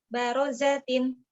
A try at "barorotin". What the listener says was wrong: Ro, bukan za tapi ro. Barorotin bukan barozatin.